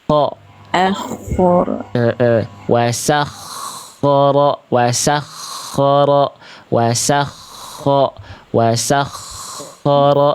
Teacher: Kho tasydid itu harus ngalir nafasnya dan suaranya dengan jelas.